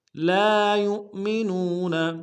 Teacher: فلا وربک لا یؤمنون، لا یؤمنون، لام الف مدہ ہے، ایک الف دال میں کھینچیں گے. یا کو حمزہ کے ساتھ ملائیں گے، حمزہ بشکل واو ہے، جھٹکا دیں گے. اور نو میں واو مدہ ہے، اس کو ایک الف دال میں کھینچیں گے.